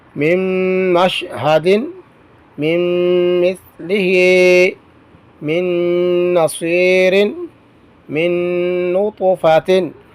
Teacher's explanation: نون ساکن کے بعد رفع جر ملون میں سے نون آیا ہے تو یہاں پر بھی ادغام غننے کے ساتھ ہوگا